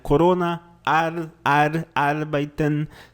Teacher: faz o R na ponta da língua